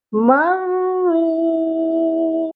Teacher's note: واو ساکن سے پہلے پیش ہے، یعنی حروف مدہ ہے، واو مدہ ہے، اس کو ہم نے ایک الف کے برابر کھینچ کر پڑھنا ہے۔